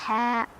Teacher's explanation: ha ini lebih halus dari tengah tenggorokan